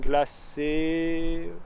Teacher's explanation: i gave a slight uh at the end but not much and it doesn't add a syllable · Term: unvoiced e